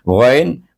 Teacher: Ingat, ghain dia hujung halkum.